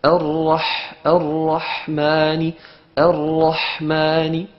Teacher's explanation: Donc le ha et le ayn sont dans le même endroit, c'est-à-dire au milieu de la gorge